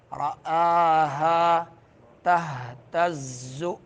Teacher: ہا جو ہے حلق کے اس حصے سے جو سینے کے قریب ہے